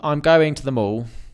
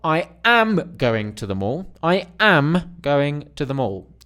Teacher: now you are emphasizing am right it's pointing to the am as in that means I